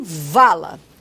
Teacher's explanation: O vá, que é uma consoante fricativa lábio-dental vozeada. Então, o Fá do Vá só vai diferenciar em relação ao grau de vozeamento, como em vala.